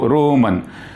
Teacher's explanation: it is ending with long vowel and it does not require any consonant to complete its sound. That is the reason it is open syllable.